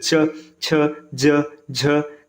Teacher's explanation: जिनके उच्चारण में जो जीभ होता है ये तालू को स्पर्श करता है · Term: तालव्य व्यंजन